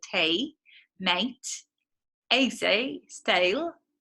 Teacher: you kind of keep the a kind of sound from before the great vowel shift